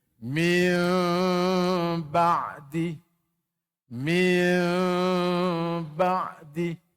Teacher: nyata kalau ikhfa Nun samar-samar kalau Idam Nun dah tak ada kalau iqlab Nun jadi mim